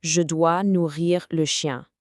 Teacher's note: chien has this beautiful nasal ending